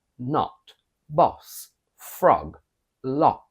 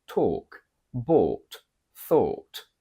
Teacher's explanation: in English we have a short o sound in not boss frog lock and a long or sound in talk bought thought